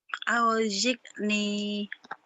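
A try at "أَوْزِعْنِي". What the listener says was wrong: Emang rata-rata Jawa tuh kalau ain mati kekeh ya.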